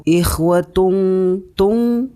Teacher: Hukum bacaannya adalah ikhfa. Cara membacanya yaitu dengan didengungkan.